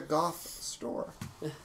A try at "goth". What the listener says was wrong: Goff. So Goff is the street. Goth is the thing. For some reason he's pronouncing goth with an F.